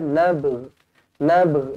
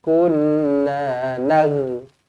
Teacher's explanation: Kita lantunkan ba, kita adakan huruf ghin sikit sahaja di hujung.